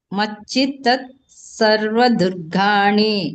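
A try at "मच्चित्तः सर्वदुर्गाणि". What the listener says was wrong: ತತ್ ಮತ್ತೆ ಯಾಕೆ ತತ್ ಹೇಳ್ತೀರಾ? ಮಚ್ಚಿತ್ತಸ್ ಮುಂದೆ ಸ ಇದೆಯಲ್ಲ ಅದನ್ನ ಬೇಕಾದ್ರೆ ಹೇಳ್ಬೋದು. ಮಚ್ಚಿತ್ತಸ್ ಸತ್ ಮಚ್ಚಿತ್ತಸ್ ಸರ್ವ ದುರ್ಗಾಣಿ ಹೀಗೆ ಹೇಳ್ಬೋದು.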